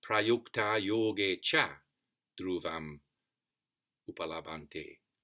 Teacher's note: And that would have been long as well, because the next word after two is dhruvam. So d and r, double consonant. That makes the previous vowel long.